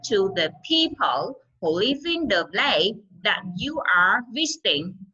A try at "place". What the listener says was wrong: Thứ nhất là place, thiếu âm sờ. Đúng không? Chị nghe chị có thấy được là thiếu âm sờ.